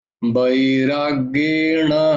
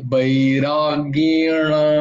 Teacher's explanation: আ, অভ্যাস নয়, অভ্যা, আ, আ, অয়ের উচ্চারণ আমরা ও বলি, অয়ের উচ্চারণটা অ হয় কিন্তু, অভ্যাসেন তু কৌন্তেয় বৈরাগ্যেণ, মূর্ধন্য, বৈরাগ্যেন নয়, ন হলে দন্তন্য হয়ে যাবে